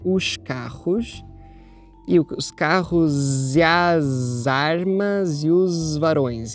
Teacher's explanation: nós temos s z e j dependendo da variedade e dependendo aqui do contexto